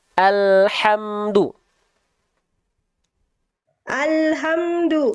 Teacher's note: huruf lam sukun Bunda jangan memantul